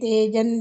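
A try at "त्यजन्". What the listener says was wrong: ತೇಜನ್ ಅಂದ್ರೆ ಇದು ಲಾಂಗ್ ಆಗುತ್ತೆ. ತ್ಯಜನ್.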